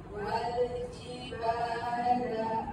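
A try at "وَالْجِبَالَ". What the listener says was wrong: Cuma ja tu besar sangat. Kita kawan sikit sebab jim huruf ni nipis.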